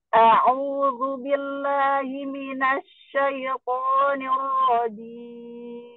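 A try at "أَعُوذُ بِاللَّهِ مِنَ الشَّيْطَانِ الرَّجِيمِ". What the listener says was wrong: Ainnya u-nya sampai keluar. A'udzu billahi minasy syaitonir rajim. Nggak au. A'u, jangan menggembung mulutnya. A'u, a'u.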